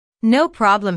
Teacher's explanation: no problem here means don't worry notice the stress on no the receptionist laughs first then puts emphasis on no by lengthening the word